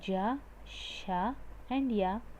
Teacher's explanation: You can just observe ja. When you're telling ja, sha, and ya, your middle part of the tongue actually touches the upper palate